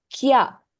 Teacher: You don't pronounce the E properly. So you contract the sound and say kya to give one sound. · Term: contraction in sound